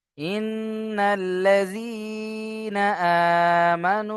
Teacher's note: খাড়া জাবার আলিফ মাদ্দার সমান, তাই খাড়া জাবার কে এক আলিফ টান দিয়ে পড়বো। · ওয়াও সাকিন ডান দিকে পেশ ও মাদ্দা, ও মাদ্দাকে একালি পরিমাণ টান দিয়ে পড়বো।